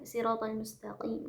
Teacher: Ihdinas siratal musta yaitu punggung ujung lidah menyentuh pangkal gigi seri. Kemudian huruf qaf yaitu pangkal lidah